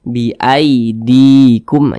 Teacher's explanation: ketika kita mengucapkan huruf Lin yang terjadi pada huruf Ya Sukun itu harus berhati-hati nah jangan sampai condong ke e · jangan sampai condong ke e jadi dia lunak saja mudah jangan sampai di baca biidihim biid biidikum biidikum Jangan tapi mudah